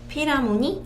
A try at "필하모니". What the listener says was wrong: 이게 필이 아니고요. 필입니다. 필. PH로 시작했고 F 발음 납니다.